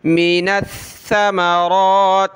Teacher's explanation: ثا کو سخت کریں گے تشدید کی وجہ سے. من الثمرات، یہ میم ہے اور ثا پہ ہم نے زبان نکالنی ہوتی ہے تھوڑی سی.